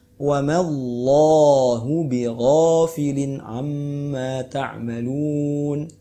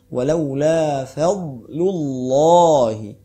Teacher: Ketika lafzul jalalah didahului huruf fathah atau dhammah maka harus ditafkhimkan atau ditaghlizkan.